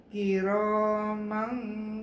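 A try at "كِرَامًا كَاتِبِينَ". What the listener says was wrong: Ka panjang.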